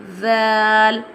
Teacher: Zal pronounced from the tip of the tongue touching the inner edge of the top two front teeth